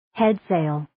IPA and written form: 'hed,seɪl (Headsail)